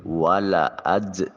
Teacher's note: والا اج، جیم ساکن ہے تو قلقلہ واجب ہوگا